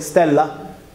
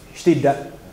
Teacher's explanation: the latin uh double l just evolved into into a uh plosive in sicilian so we have d so if you say stella in sicilian